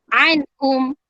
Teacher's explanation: Izhar, ingat izhar tu kena jelas, nyata dan terang. Nun mati bertemu ha, tak boleh dengung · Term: Izhar halqi